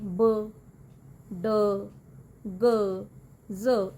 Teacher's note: ਵੌਇਸਡ sounds ਉਹ ਹੁੰਦੀ ਹੈ ਜਦੋਂ ਵੋਕਲ ਕਾਰਡਸ ਵਾਈਬ੍ਰੇਟ ਕਰਦੇ ਆ, ਜਿਵੇਂ ਬ, ਡ, ਗ, ਜ਼, ਇਹ ਬੋਲ ਕੇ ਦੇਖੋ।